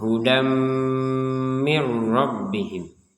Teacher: Nah, hudan di sini ada tanwin bertemu dengan huruf mim, ya, bertemu dengan huruf mim, maka kita bacanya dengan dengungan hudam. Jadi kalau ditulis bahasa Indonesia itu dam, gitu ya, dam, bukan hudan lagi, tapi dam, dam, D-A-M, hudam, disertai dengungan.